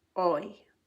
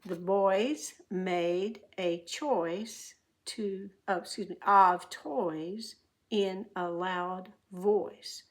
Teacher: The tongue also dips down a little bit to make plenty of room for air. And then oi starts with aw, and then it goes to a long E.